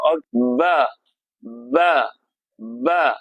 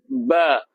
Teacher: pertemuan dua bibir. Bibir atas bertemu dengan bibir bawah. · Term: Syafatain